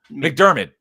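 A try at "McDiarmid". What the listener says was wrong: McDavid. There's no R there.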